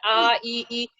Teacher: इसमें ना जिह्वा सटता है तालु में, ना कोई डिस्टरबेंस होता है। तो आ ई है वो जो गले से निकलता है।